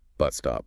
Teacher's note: if a word ends and the next starts with the same consonant like bus stop, you only make the sound once